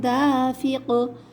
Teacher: آخر میں قاف پہ آواز پلٹ کر آئے گی، حروف قلقلہ ہے